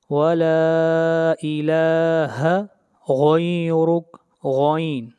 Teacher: غین کو موٹا پڑھتے ہیں، غین حروف مستعلیہ میں سے ہے اور حروف مستعلیہ کو ہمیشہ موٹا پڑھا جاتا ہے